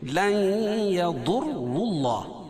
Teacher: نون ساکن کے بعد ادغام مع غنہ کے 4 حرفوں میں سے یا ہے تو یہاں غنہ کر کے پڑھیں گے